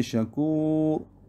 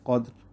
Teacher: پیش کی صورت میں پر، جیسے شکور، را پر، اور زیر کی صورت میں باریک